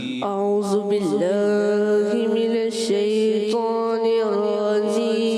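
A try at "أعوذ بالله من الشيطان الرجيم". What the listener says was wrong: बेटा जाल की अदायगी क्लियर करें, जाल दोबारा पढ़े, जाल।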